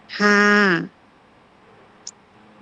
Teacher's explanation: হলকের মধ্যখান হইতে আওয়াজকে চাপায়া